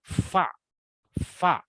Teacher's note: bibir bagian bawah bagian dalam pada posisi menempel pada dua gigi seri atas